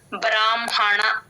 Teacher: హ కింద మ వ వచ్చినప్పుడు మ ఫస్ట్ చెప్పి తర్వాత హ చెప్తాను